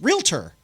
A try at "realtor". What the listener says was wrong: it's pronounced the way it's spelled so it's there's no te r at the end so it's not real tur